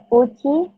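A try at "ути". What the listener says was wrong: Uti. Jadi dia kepisah tuh. Kan kalau ini T ketemu I, jadi ci ya. Tapi kalau ada Tvyordisnaknya, I-nya kepisah. Uti gitu.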